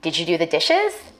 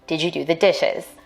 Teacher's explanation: a rising tone in questions like these